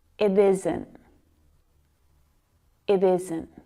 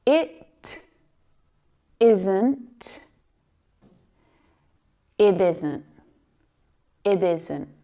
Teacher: because that T sound comes between two vowels, it actually sounds a lot more like a D in my accent.